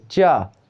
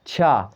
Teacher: कम वायु निकलती है चा, जब छा बोलते हैं तो ज़्यादा वायु निकलती है चा छा, तो ज़्यादा वायु निकल रही है इसीलिए वह महाप्राण है।